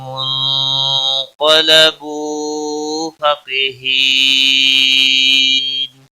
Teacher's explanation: نون ساکن کے بعد حروف اخفا کا قاف آیا ہے، اخفا حقیقی ہوگا، گنہ کے ساتھ پڑھیں گے. قاف حروف مستعلیہ میں سے پر پڑھا جائے گا.